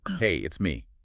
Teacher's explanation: the pitch isn't flat. It goes up slightly on hey and then it comes down at the end on me. Hey, up it's me down. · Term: Intonation